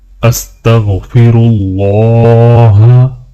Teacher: یہاں پر اللہ کے نام کو موٹا پڑھا جائے گا